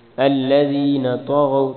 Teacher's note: طا اور غین دونوں کو موٹا پڑھیں گے اور دال پہ کلکلا کریں گے۔